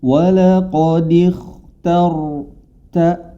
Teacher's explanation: Namun ketika masuk ke ro, ro-nya yang menjadi tebal. Hati-hati, ta-nya tetap ta istifal, tetap tipis. Ketika ro dibaca baru dia menjadi tebal. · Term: tebal atau tafkhim